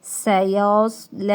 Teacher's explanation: آگے سین کی سیٹی نکالنی ہے، صاد کی سیٹی بھی نکالنی ہے، موٹا بھی کرنا ہے